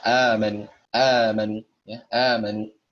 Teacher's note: diganti hamzahnya menjadi mad, maka dia panjang 2 harokat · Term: mad badal